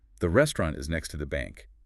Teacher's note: The strong beats fall on the nouns. Restaurant. Bank. The little phrase in the middle, next to, is quick.